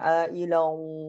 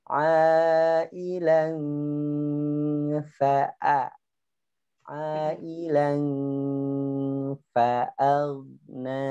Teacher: Ilang itu tebal. Ailan tipis.